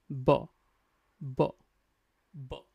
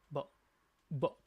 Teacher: Remember, this is voice sound, okay? If you actually touch your throat, you'll feel like there is a vibration, a small vibration to make this sound like b b b You see like b b So, your two lips will touch together, okay?